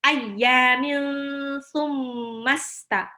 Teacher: Ayyamil ya-nya di sini matabi'i mil summa tanwin ketemu sa itu ikhfa ya. Tanwinnya hampir mau lompat ke mahrosnya sa. Dibaca ditahan 2 sampai 3 harokat. Ayyamil jadi bukan ayyamin summa tapi ayyamil summasta.